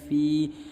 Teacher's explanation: فیہن الحج، فا یا زیر فی، دیکھ لیجئے یہ یا ہے، یا کے نیچے 2 نقطہ ہوتا ہے اور یا ساکن سے پہلے اس فا کے نیچے زیر ہے، لہٰذا یا مدہ ہوگا، یا مدہ کو 1 الف کے برابر کھینچتے ہیں